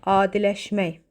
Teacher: Vurğu sözün son hecasındadır.